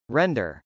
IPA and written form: rˈɛndɚ (render)